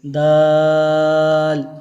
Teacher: دال کو ایک تو باریک پڑھیں گے اور دوسرا لمبا کر کے پڑھیں گے